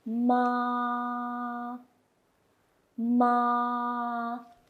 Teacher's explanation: first tone you got to pronounce high and level